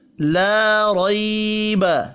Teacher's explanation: لا ریب، لا الف مدہ ہے، را کو زبر کی وجہ سے پر پڑھیں گے، روئی یا لین ہے، با کھینچ کر نہیں پڑھا جائے گا۔